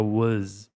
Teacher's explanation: E o was, ele tem a pronúncia do Z, né? Então fica was, não fica was.